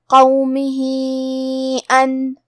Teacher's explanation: قاف حروف التفخیم میں سے ہے تو ہم یہ حرف کو موٹی آواز میں پڑھیں گے. آخری میں ہا کے نیچے کھڑی زیر ہے اور اس پہ مد کا علامہ ہے.